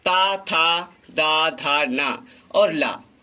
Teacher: इनका उच्चारण स्थान दंत से होता है, इन्हें दंत कहते हैं।